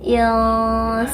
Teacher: nun sukun bertemu huruf ikhfa yaitu sin. Samarkan bunyi nun sukun, persiapkan makhraj huruf sin,